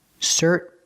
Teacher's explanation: Well, you can pronounce the T and you can say certainly, but it sounds more natural in American English if I change the T. I make a stop T, cert, I put my tongue up, and then I fall to the end sound.